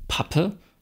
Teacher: Da stellen Sie mit beiden Lippen einen Verschluss her. Der wird gelöst und es knallt. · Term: Plosiv